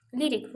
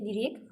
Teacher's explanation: Lirik, vurğu birdədir, isimdir, lirik, vurğu sondadır, bu da sifət olmuş olacaqdır.